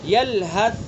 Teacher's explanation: دیکھیں ہم جب یلحظ کو ادا کریں گے تو آواز کے اندر آواز ایک دم بند نہیں ہوگی بلکہ آواز جاری رہے گی اور بڑی نرمی کے ساتھ، پستی کے ساتھ آواز جاری رہے گی۔ یلحظ، ایک دم آواز بند نہیں ہوئی بلکہ آواز جاری رہی۔ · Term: ہمس